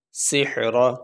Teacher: تو یہاں پہ آخری حرف ہے را، اس کے اوپر ہے زبر، تو وقف کرتے ہوئے را کے اوپر جو زبر ہے وہ ہم نہیں پڑھیں گے، را کو ساکن پڑھیں گے۔ را تو پڑھیں گے لیکن را کو ساکن پڑھیں گے، اس کے اوپر جو زبر ہے وہ نہیں پڑھیں گے۔